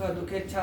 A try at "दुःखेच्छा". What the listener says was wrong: दुखेच्छा नहीं बाबू, दुखेच्छा विसर्ग न है।